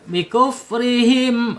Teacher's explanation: Rnya tarkik tipis ya. Karena harakatnya kasrah. Him ya. Himnya h-nya ada di makhraj tenggorokan bawah.